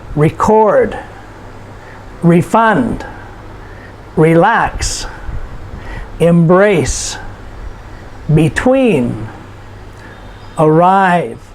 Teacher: these are two-syllable verbs, and we notice the stress is put on the last syllable.